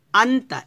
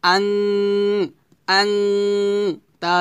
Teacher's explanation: এই তা যদি নুন সাকিনের পর আসে তাহলে তাকে বলা হবে ইকফা গুন্না তো আমরা গুণনাটা কিভাবে করবো দেখুন হামজা নুন জবর আন তা